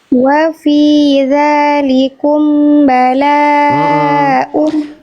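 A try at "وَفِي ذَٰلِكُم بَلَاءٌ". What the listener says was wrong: Wafi dzalikum bala. Amnya tahan dulu. Tadi masih wafi dzalikum bala. Amnya tahan dulu. Dzalikum bala. Tahan dulu ya.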